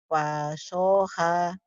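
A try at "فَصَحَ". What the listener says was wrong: Fa, bukan wa. Fa.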